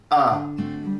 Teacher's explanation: le R va modifier la prononciation du E qui le précède, pour donner un joli ɜː